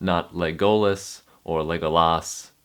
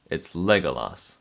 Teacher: The emphasis is on leg